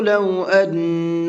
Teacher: نون کے اوپر تشدید ہے تو یہاں پر غنہ کریں گے